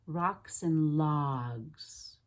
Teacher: when you do that ah in logs before a voiced consonant like the G, you really need to stretch it, lengthen it, feel the ah in your whole body.